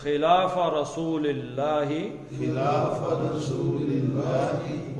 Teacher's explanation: اللہ کا لام پتلا پیچھے زیر ہے